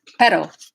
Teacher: That's just one R. So that pero, that R in Spanish is a flap T in English. So pero in Spanish would be like pedo in English, like pedophile, basically.